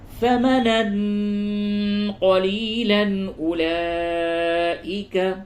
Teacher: تنوین کے بعد حمزہ ہے اس جگہ پہ اظہار ہوگا · یہ مد متصل ہے اس جگہ پہ کھینچ کر کے پڑھیے اور واو نہیں پڑھا جائے گا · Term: اخفا